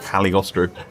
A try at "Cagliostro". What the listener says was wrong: I don't think you pronounce the G. I don't think you're meant to, because I'm assuming it's Italian, so it'd be Cagliostro.